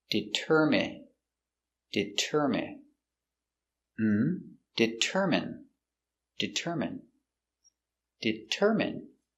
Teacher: Stress is on the third syllable.